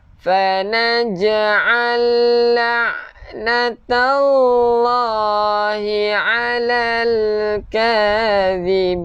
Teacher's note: hujung lidah keluarkan sikit untuk zal.